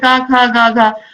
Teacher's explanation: इन वर्णों का उच्चारण स्थान कंठ से होता है, इन्हें हम कंठ से बोलते हैं।